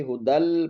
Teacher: تو نون تنوین کو ہم نے آگے لام میں مرج کرنا ہے، لام میں ملا دینا ہے ، ہدن نہیں پڑھیں گے، ہدل پڑھیں گے، اور یہ یا